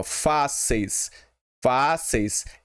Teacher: Ela é paroxítona porque ela tem a sua sílaba forte na penúltima.